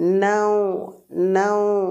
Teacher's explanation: এটা লিন হবে, লিন টান হবে না, মাদ্দে লিন নয়, এমনি লিন হবে, নরম করে পড়বো